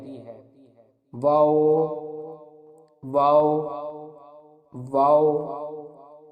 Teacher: واو کے مخرج کی ادائیگی دونوں ہونٹوں کی گولائی سے ادا ہوتی ہے